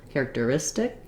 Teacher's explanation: here's a t that's between two unstressed syllables in in the word and so that makes it sound a little bit more like a d basically a flap t